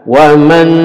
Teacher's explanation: ini idgham bighunah didengungkan ومن ya dengung dua harokat atau tiga